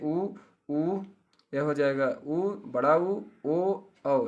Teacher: ओठ गोला हो जाता है, वहाँ पे होता है वृत्तमुखी स्वर